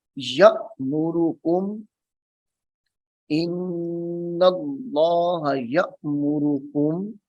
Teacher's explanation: یہاں پہ جھٹکا دیں گے کیونکہ حمزہ ساکنہ ہے